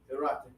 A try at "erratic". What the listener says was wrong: You're kind of doing I need more ah.